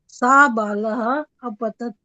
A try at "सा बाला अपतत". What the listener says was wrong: हाँ, पर इसमें बाला को जरा ठीक तरह से बोलो। हाँ नहीं, फिर विसर्ग नहीं आएंगी ना,